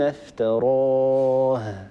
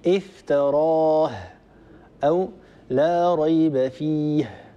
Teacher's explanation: نفتح الوتران الصوتيان وبالتالي يعني نخرج هواء كثيرا من غير أن ننطق هاء صحيحة. الهاء يحصل فيها تقارب بين الوترين الصوتيين.